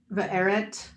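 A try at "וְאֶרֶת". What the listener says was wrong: Well, ve'eret, because you don't want to accent the chatav segel.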